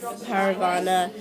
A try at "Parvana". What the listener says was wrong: Parvana, not Paravana. You said Paravana? Parvana. If there's no extra A. Parvana. Parvana. You said Paravana. Parvana.